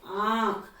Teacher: तो हम बोलते हैं आंख, तो हमने आंख जैसे बोला, तो बोलते समय हमारी मुख से और नासिका से दोनों से हवा बाहर निकली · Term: अनुनासिक